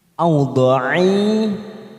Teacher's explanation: fathah tanwin kita baca jelas karena bertemu hamzah. Fan namanya idhar halki.